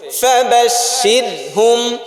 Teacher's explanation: হ্যাঁ, র পাতলা, কারণ র সাকিন ডাইনে জের আসছে